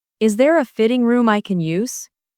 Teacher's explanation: The stress here is on fitting and use.